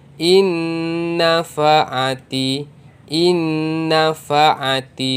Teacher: bunyi nun yang mati, nun sakinah dimasukkan ke dalam bunyi nun. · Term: idgham ma'al gunnah